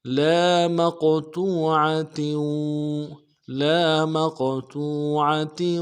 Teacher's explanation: قاف موٹا کریں گے، اور قلقلہ ہے، قاف ساکن قلقلہ بھی ہوگا